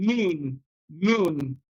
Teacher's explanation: Then you have the alveolar nasal. You use the tip of your tongue and your tooth ridge, and you have one alveolar nasal, and that is the N or na, as in noon, noon.